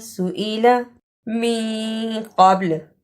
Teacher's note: سئلا لمبا نہیں کرنا، سئلا من قبل قاف کو موٹا پڑھنا، با پہ قلقلہ کرنا